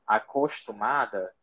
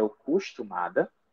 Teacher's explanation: nós vamos ter a supressão ou da vogal átona inicial ou da sílaba átona inicial